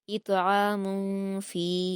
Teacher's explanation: اطعام میں طا کو قلقلہ کے ساتھ پڑھا جائے گا